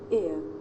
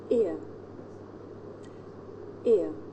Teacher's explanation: this is a diphthong a double vowel sound the shape the mouth makes changes from the beginning of the sound to the end it's pronounced ear did you notice how the shape of my